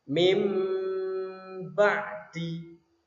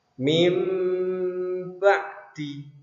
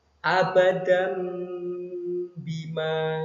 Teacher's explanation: mengganti suara nun menjadi suara mim dengan merapatkan kedua bibir. Bibirnya dirapatkan, ditekan dua harokat atau satu alif. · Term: iqlab